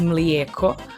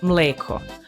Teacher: Even the pronunciation, which sounds like it should be a bigger obstacle, mostly comes down to one recurring vowel swap. Croatian and Bosnian say milk as mlijeko, while Serbian says mleko.